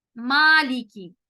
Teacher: اس الف کو ہم موٹا کریں گے نہیں, ہم اس کو بالکل نارمل آواز کے ساتھ باریک پڑھیں گے